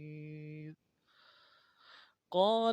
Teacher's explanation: قاف کو موٹا کرنا ہے، قاف کے ساتھ الف مدہ ہے